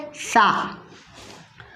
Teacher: इसी तरह से सा, जुबान का सिरा दोनों दांतों के दरमियान से, जुबान का सिरा और दांतों का सिरा मिलकर सा अदा होता है